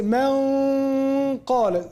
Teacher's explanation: You go to qaf at the back of the tongue.